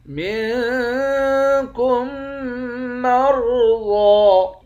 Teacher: ضاد کے اوپر کھڑا زبر ہے، ایک الف کے مقدار کھینچ کر پڑھتے ہیں